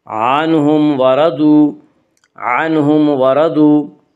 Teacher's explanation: عنہم، عنہم میں اظہار شفوی ہوگا، عنہم وردو میں اظہار شفوی ہوگا، اس کا قاعدہ ہے کہ میم ساکن کے بعد میم اور با کے علاوہ کوئی اور حرف آئے تو وہاں پہ اظہار شفوی ہوگا، یعنی میم کو ظاہر کر کے پڑھیں گے